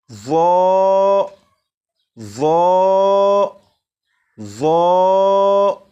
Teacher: Number 1، زبان دانتوں سے بھی لگے۔ نمبر 2، آواز کو بھی موٹا کر کے پڑھیں گے۔